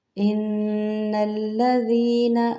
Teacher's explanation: ان الذین آمنوا وعملوا الصالحات، ان الذین دیکھیں یہاں پہ نون مشدد پر غنہ کریں گے۔ ان الذین، زینہ نہیں کریں گے، نرم پڑھیں گے ذال کو۔